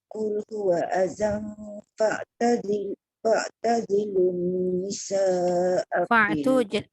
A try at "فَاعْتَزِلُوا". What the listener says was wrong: Fa' tu tekan kuat sikit. Qul huwa adhan fa'tazilun.